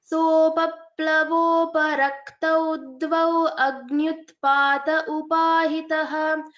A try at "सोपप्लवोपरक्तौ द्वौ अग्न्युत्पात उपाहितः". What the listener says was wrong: So for other attendees' attention, so here after dvau agnyutpata, so you need to give a pause after dvau. So you can't tell continuously.